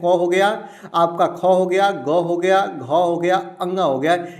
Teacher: क वर्ग का उच्चारण स्थान क्या होता है दोस्तों? कंठ होता है।